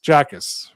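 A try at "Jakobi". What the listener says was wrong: No, you Akis. So don't pronounce the J at all. It's fake.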